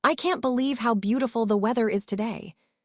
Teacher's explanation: Put stress on can't, believe, beautiful, weather, and today. Let the other words flow more quickly between these stressed words.